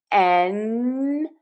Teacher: my tongue is touching the spot where my teeth and skin meet on the roof of my mouth. Air is moving out of my nose. Another tip, N in English connects to the vowel and also the N in English will be longer than many of my students from many different language backgrounds make that sound.